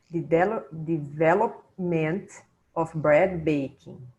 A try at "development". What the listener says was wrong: Yes, much better.